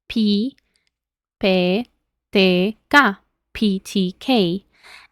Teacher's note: estas son letras aspiradas que ya sabemos son letras con un poco más de aire entonces no es p pie pie no es ti es ti